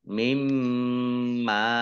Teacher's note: bacaan idgham bi gunnah masuk dengan mendengung, yaitu mendengung mim, ditandai mimnya ada tasdidnya, dibaca gunnah atau mendengung ditahan 2 harokat.